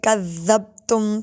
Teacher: کذبتم میں ذال ہے وہ نرمی سے پڑھیں گے